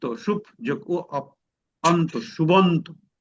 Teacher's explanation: প্রথমটা হয়ে যাবে তৃতীয়টা, ওই যে যেটা আমাদের এই যে প্রথম দিনে ক্লাসে যেগুলো শেখানো হয়েছিল সেরকম, অর্থাৎ প্রথম বর্গের যে প্রথম ধ্বনি সেটা তৃতীয় ধ্বনিতে রূপান্তর হয়ে যাবে